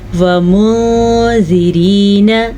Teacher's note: ومنذرین، نون ساکن کے بعد حروف اخفا میں سے زال آیا ہوا ہے تو ہم نون ساکن کو چھپا کے غنے کے ساتھ پڑھیں گے · را کو باریک پڑھ لیجیے گا، را کے نیچے زیر کی وجہ سے